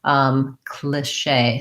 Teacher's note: So I say that with a relaxed I sound